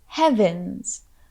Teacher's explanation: the emphasis for this phrase is on the first part of heavens.